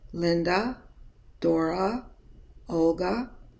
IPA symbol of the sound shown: ə